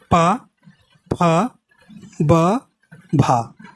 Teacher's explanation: जब बोलते हैं तो पा, तो दोनों ओंठ मिल रहे हैं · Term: ओष्ठ ध्वनि